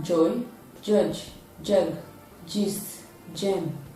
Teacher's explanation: it is a voiced sound and when it is produced the tip of the tongue is raised in the alveolar region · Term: voiced palato-alveolar affricate sound